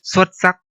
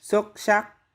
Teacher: S and X are both pronounced S in Hanoi and much of the north, but in Southern Vietnamese, S is sh and X is S. For example, the word for excellent in Northern Vietnamese xuất sắc, and in Southern Vietnamese.